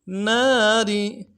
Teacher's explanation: نون کے ساتھ الف مدہ ہے، ایک مقدار میں کھینچیں گے ، را کو نرم سے ادا کریں گے، ناری، اصحاب النار